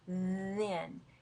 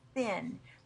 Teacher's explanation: Now th is either voiced or unvoiced. Voiced there's a vibration in your vocal cords. Unvoiced there's no vibration in your vocal cords.